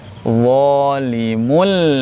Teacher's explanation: tanwinnya hilang masuk ke lam tapi tidak disertai dengung